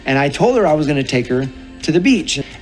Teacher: Então aqui ele emendou told her.